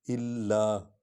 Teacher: لام پر شد ہے، اس لیے اس کو بڑھا کر پڑھیں گے، وہ الف اور لام کو اکٹھے پڑھیں گے کیونکہ اس پر شد ہے۔